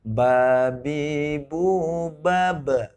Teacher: Ini harus qalqalah, mantul, apalagi kalau kubro di akhir kalimat gitu.